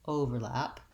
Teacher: So the length comes on just the O sound, the O syllable, overlap, versus the verb overlap.